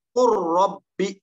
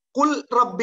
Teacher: உலமாக்கள் அனைவரும் ஒன்றுபட்டு இத்ஹாம் செய்த சந்தர்ப்பம் லாமுக்கு பின்னால் ரா வருவது